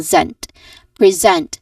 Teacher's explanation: There's a stressed um syllable here which is a second syllable